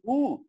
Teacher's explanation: உதடு இப்படி வட்டமா வரும், அதுல காத்து வரும், இடையில தடை இருக்காது